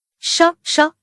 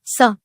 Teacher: इनमें श के उच्चारण में जीभ तालु को और स के उच्चारण में दांतों की जड़ को छूती है।